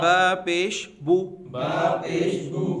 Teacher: ہونٹوں کو مکمل گول کر کے